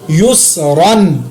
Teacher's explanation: یا زبر سین یا پیش سین یس، را دو زبر رن، یس رن، یہاں پر میں نے را کے اوپر تنوین پر غنہ نہیں کیا کیونکہ آگے حروف حلقی ہے، لیکن را کو میں نے پر ضرور پڑھا، موٹا پڑھا۔